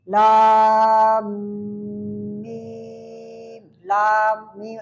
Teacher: اگر لام کی میم پر غنہ بھی ہو رہا ہے، زور بھی آ رہا ہے، تو وہاں پر مد ہوگی مد لازم حرفی مثقل، یعنی جہاں تشدید آ جائے لفظ کے آخر حرف پر، لام کے آخر پر تشدید آ جائے تو وہ مثقل کہا جائے گا۔